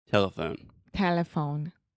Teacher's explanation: Yeah, so the schwa is the middle syllable.